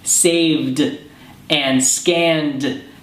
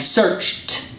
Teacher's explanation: saved and scanned have a D sound at the end and searched has a t sound at the end